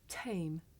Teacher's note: in English we say the sound at the beginning of the word tame with a big puff of air